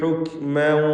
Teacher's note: കാഫ് മഹ്മൂസായ അക്ഷരമാണ്. ഹുക് എന്ന് ശ്വാസത്തിൻ്റെ ചലനം, അതാണ് ഹംസ് കൊണ്ട് ഉദ്ദേശിക്കുന്നത്. അങ്ങനെ ഉച്ചരിക്കണം കാഫിന്.